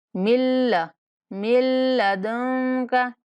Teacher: یہاں نون کا ادغام کریں گے، میم کو مشدد لام کے ساتھ بلا غنہ ملائیں گے